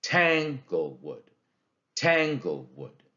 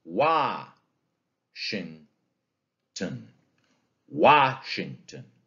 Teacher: it's a word with a stressed syllable at the beginning and then two unstressed syllables. Okay, stressed syllable followed by two unstressed syllables. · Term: dactyl